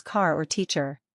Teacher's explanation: In most American accents, the “r” is clearly pronounced at the end of words such as car or teacher. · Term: the letter “r.”